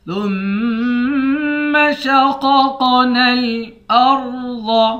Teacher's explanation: را اور ضاد دونوں کو موٹا پڑھیں گے۔ شین کو قاف کے ساتھ ملا کر قاف کو بھی موٹا پڑھیں گے۔